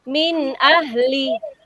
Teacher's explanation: bunyi huruf nun dan tanwinnya dibaca jelas ketika bertemu dengan huruf izhar